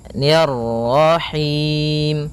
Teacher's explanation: ni tipis ketemu dengan ro yang tafkhim. Ro tebal maka kita baca dengan bacaan tebal rnya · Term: ra tebal